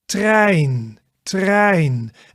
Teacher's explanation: Then we go to the ei, the ei. So in Dutch we have like a short ei and a long ei, and they're both pronounced in the same way